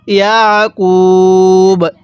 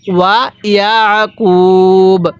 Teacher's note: আইনটা পড়ার সময় গলার মধ্যে হালকা চাপ দিয়ে পড়লে আইনটা সহি শুদ্ধ উচ্চারণ হবে